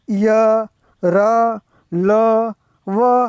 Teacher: જેનું ઉચ્ચારણ ગળાના અંદરના ભાગેથી થાય તેને અંતસ્થ વ્યંજન કહે છે. હવે આની અંદર આપણે જોઈએ તો ય, ર, લ, વ, આ 4 એ અંતસ્થ વ્યંજન છે કે જેનું ઉચ્ચારણ આપણા ગળાના અંદરના ભાગમાંથી થાય છે.